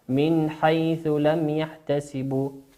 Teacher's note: النون هنا نون ساكنة أتى بعدها حرف الحاء، والحاء أعزائي المشاهدين كما قلنا هو من حروف الإظهار، والإظهار هو الوضوح